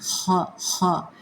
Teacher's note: تھوڑی سی گلے میں خراش کرتے ہوئے اس کو ادا کیا جاتا ہے